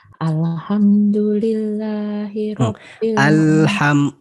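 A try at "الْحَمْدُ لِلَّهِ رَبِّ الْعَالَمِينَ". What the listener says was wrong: jangan alnya jangan mantul.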